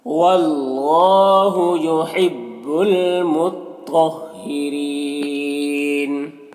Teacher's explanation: را کے نیچے زیر ہے، را کو باریک پڑھیں گے · اللہ کلام سے پہلے واو کے اوپر زبر ہے تو اللہ کلام کو پر پڑھیں گے، کھڑا زبر ہے، ایک الف کے برابر کھینچیں گے.